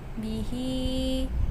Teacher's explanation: bihi ini ada mad silah qasirah, hanya dibaca pendek